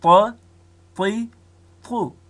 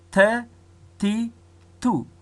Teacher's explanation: طا ډکه وایو او تا تشه وایو. په طا کې قلقله صفت دی او په تی کې بیا قلقله صفت نسته.